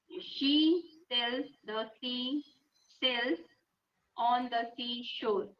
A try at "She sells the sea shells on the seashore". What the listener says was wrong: The only one that you got wrong was shells. Yeah, it sounded more like cells without H sound. The difference is in how we pronounce it. Sir is hissing sound of a snake. Cells. Whereas sure, if you look at my mouth formation, sure, it's rounding a little. Sure. Or maybe you can remember this. Shh,